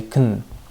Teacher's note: we would link can you? And we would reduce can to kun.